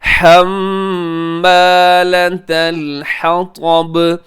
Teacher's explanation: اسے تا کو اپنے موٹا نہیں کرنا